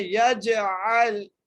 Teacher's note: یجعل عین کو لام سے ملانا ہے، عین کو عین کے مخرج سے ادا کرنا ہے وسط حلق سے